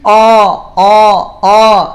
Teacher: o ada yang bunyinya o o Il la eah O O kalau O itu pangkal lidahnya naik